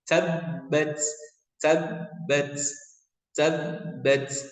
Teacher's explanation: tasdidnya digunakan dulu baru dipantulkan ya